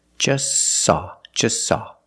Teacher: We see the T is between consonants, so don't pronounce it. It's silent. just saw. You link the S with the S.